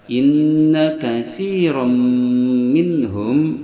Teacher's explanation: cara bacanya tanwin fathah masuk ke mim dengan dengungan 2 harakat. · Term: idgham bi gunnah